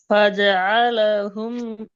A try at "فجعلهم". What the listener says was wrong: ஃபஜஅல ஃபஜஅல அந்த ரிப்பீட் ஆகக்கூடாது. ஏன் ஹூக்கு அடுத்து ஹூ வருது இல்லை? ஏன் திருப்பி ஃபஜஅல ரிட்டர்ன் ஆகிறீங்களே? ஃபஜஅலஹு என்றால் ஏன் திருப்பி ஃபஜஅலஹு ரிட்டர்ன் ஆகிறீங்க? நீங்க ஹூக்கு தானே போகணும், உசாக்கு தானே போகணும். அப்ப ரெண்டு முறை ஃபஜஅலஹு இது வருவான்ல அப்படியா உங்களோட ஸ்கிரீன்ல? ஃபஜஅலஹு ஃபஜஅலஹுன்னு ரெண்டு முறை இருக்குது அப்படியா?